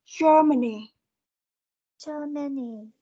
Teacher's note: chúng ta sẽ có trọng âm âm đầu tiên